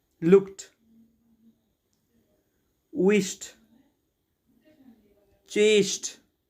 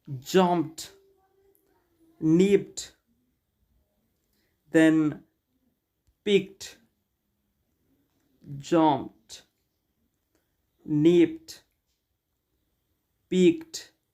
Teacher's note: So there are several words where d is added, but in pronunciation we pronounce like t.